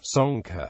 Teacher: the local dialects had an O pronunciation for the middle A and a softening of the initial SH and final KH. The word was pronounced locally as sonka, which in Portuguese was transliterated as conca, and alternatively without the final A.